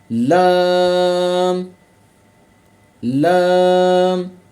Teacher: जुबान की करवट के आखिर से नोक तक का हिस्सा जब ऊपर एक दाढ और दांतों के मसूड़ों से लगे तो इससे लाम अदा होता है